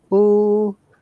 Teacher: that we have got four types of you know intonation like upper intonation that goes up